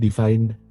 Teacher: Dalam divine, vokal tersebut panjang dan mengalami GVS menjadi ai. Namun dalam divinity, vokal tersebut diperpendek mengalami laxing sebelum GVS terjadi sehingga tidak ikut bergeser dan akhirnya menjadi i.